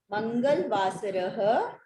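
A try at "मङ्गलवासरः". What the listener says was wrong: In Hindi it is Mangal, here it is Mangala. Mangalavasaraha.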